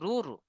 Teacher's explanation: রয়ের উপরে পেশ এসে র পুর করে বা মুখটা গোল করে পড়তে হবে।